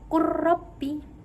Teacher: Kemudian yang kedua ada contohnya qul rabbi. Lam sukun dimasukkan ke dalam huruf yang kedua yaitu ra sehingga menjadi qur rabbi. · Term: idgham mutaqaribain